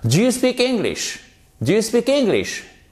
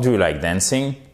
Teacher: Donc, les yes, no questions. Intonation montante.